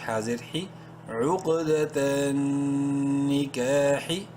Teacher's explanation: کاف الف زبر کا الف مدہ ہے، کاف کو ایک کے برابر لمبا کریں گے